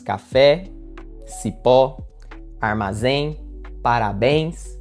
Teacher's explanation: Veja que a sílaba mais forte cai na última. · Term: oxítonas